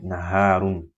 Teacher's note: Noon comes from the tip of the tongue and what lies opposite this region from the gum of the two front top incisors and slightly forward on the gums than the letter raw.